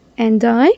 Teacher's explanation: Many times I hear natives saying and I. They link the D with I. And I or they drop it and they still do the linking.